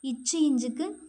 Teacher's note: நாவின் இடை அன்னத்தின் இடை